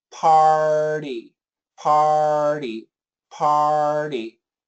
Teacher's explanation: It's just a flip, a flick of the tongue.